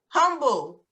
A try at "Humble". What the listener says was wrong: Is that how you pronounce it? No. It's pronounced Humble, Texas. Humble, Texas. The H is silent.